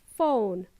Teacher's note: Phone starts with an O, ends with an OO sound. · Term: diphthongs